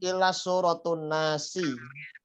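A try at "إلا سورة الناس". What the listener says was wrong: Tuh, nggak pakai tanwin.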